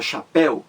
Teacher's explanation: você vê que a palavra chapéu tem duas sílabas chapéu a mais forte aí é a última sílaba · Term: palavra oxítona